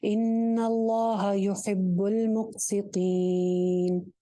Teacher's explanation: مقسطین کے اوپر آپ مد عارض لگائیں گے, لمبا کر کے وقف کریں گے. ان اللہ یحب المقسطین, یہاں پہ 3 الف کے برابر آپ لمبا کر سکتے ہیں.